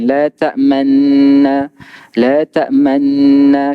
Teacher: Yang kedua keadaan yang muncung mulut iaitu ismam. Surah Yusuf kan, la ta'manna kena muncung mulut ismam.